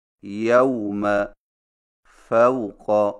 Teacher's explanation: واویلین کی ادائیگی، واویلین کو واو مدہ کی طرح کھینچ کر نہیں پڑھا جاتا بلکہ اسے نرمی کے ساتھ بغیر کھینچے پڑھا جاتا ہے